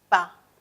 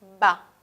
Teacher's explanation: La diferencia es que el primero es sordo y el segundo es sonoro. Es decir, vamos a poder notar una vibración en las cuerdas vocales, una vibración en este tracto vocal, se va a notar.